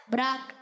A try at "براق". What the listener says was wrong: براق۔ پھر آپ راہ پہ تشدید کیوں لگا رہے ہیں؟ براق، پکی بات ہے؟